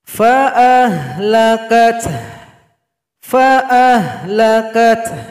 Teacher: Jadi ada seperti bunyi mengeluh, ganti huruf H yang kita sukunkan, ada bunyi anginnya.